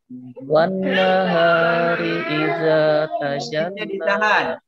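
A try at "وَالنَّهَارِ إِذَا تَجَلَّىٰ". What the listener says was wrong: Tasdid. Nun tasdidnya jangan lupa ditahu.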